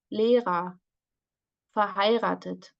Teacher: we have this vocalized R